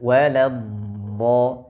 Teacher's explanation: ketemu dengan huruf dhad tasydid huruf dhad sama dengan kata almagdubit dengan cara menempelkan dan menekan bagian tepi lidah pada gigi geraham atas kemudian mengalirkan suaranya